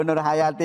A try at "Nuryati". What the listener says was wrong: Nggak pakai H, Ustaz. Nggak pakai H. Hanya diilangin. Nuryati.